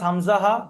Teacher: গলার শুরু থেকে উচ্চারণ হয়